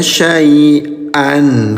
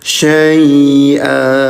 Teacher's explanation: kalau berhenti bunyinya jadi panjang 2 harokat, namanya mad'iwan.